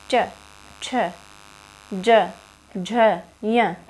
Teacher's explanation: च, छ, ज, झ, य, ये तालु से बोले जाते हैं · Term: तालव्य